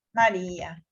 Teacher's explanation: se acentúa la penúltima sílaba. Entonces es grave.